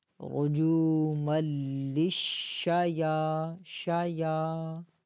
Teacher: آگے شین کو کھینچنا نہیں ہے، شین کے اوپر زبر ہے، شایاطین نہیں پڑھنا